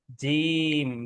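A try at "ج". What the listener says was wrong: Very good, इसको थोड़ा सा लंबा करके पढ़ें, खूबसूरत करके, यूं। जीम।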